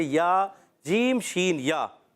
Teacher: یہاں پر زبر ہے، یا متحرکہ یا لین جو ادا ہوتے ہیں زبان کا درمیان اوپر کے تعلق کے درمیان سے، زبان کے درمیان حصے اور اوپر کے تعلق کے درمیان حصے سے